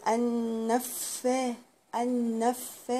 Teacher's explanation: يعني بطول في الحرف شوية، بقول ان انف. الفاء هنا برضو مشددة، يعني معناها ان هي حرفين